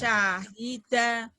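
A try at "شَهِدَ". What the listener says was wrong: Syahida, nggak ada yang panjang.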